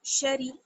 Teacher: شین زبر شا، را زیر ری، شری، را کو بھی باریک پڑھیں گے کیونکہ زیر ہے